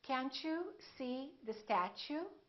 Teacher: when the t is followed by a you it becomes chu